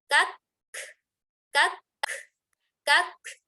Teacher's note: ada huruf kaf yang sukun, tahan dulu suaranya, baru alirkan nafasnya.